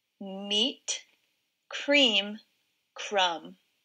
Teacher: i hear the vowel sound e in meat and cream crumb has a different vowel sound ah